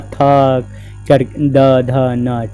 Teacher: ये सब दंत से बोला जाता है यानी दांत का यूज इसमें किया जाता है